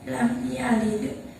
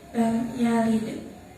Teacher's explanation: Di situ ada qalqalah yang matinya asli di tengah kalimat, maka cara bacanya memantulkan huruf qalqalah tersebut. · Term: qalqalah sugro